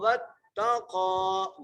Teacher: واو کو تا سے مضبوطی سے ملانا ہے، قاف کو ایک مقدار کھینچ کے پڑھنا ہے